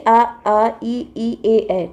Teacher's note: होठों की स्थिति के आधार पर, मतलब होठ खुलता है या बंद होता है या होठ कैसे राउंड होता है, उसके आधार पर इसको 2 भागों में बांटा गया है। तो अवृतमुखी यानी कि उच्चारण में होठ वृतमुखी या गोलाकार नहीं होता, मतलब कि गोल नहीं होता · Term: अव्रत मुखी